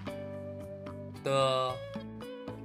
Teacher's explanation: Suara ujung lidah atau apikal. Lafalkan seperti konsonan T dalam bahasa Indonesia. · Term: konsonan D